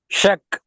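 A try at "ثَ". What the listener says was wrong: ஷக் அல்ல, நாக்கு வெளியே வரணும். ச சவுண்ட் வரக்கூடாது, காற்று வரணும். ச. சக்.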